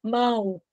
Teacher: com som de u mão o o tem som de u quando o o tem som de u Ele é semivogal